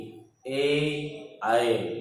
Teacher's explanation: तालु और जीभ के स्पर्श से बोले जाते हैं, इसलिए ये कंठ तालव्य वर्ण कहलाते हैं